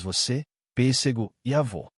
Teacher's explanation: O acento circunflexo indica vogais fechadas, como nas palavras você, pêssego e avô.